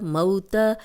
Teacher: یہ واولین ہے، نرمی سے بغیر کھینچے پڑھیں گے، موت، اب زبر کو لمبا ہونے سے بچائیں گے۔